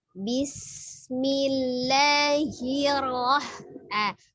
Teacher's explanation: sinnya sifatnya safir ya, jangan dipantulkan, bukan bismillah, bukan bismi ya.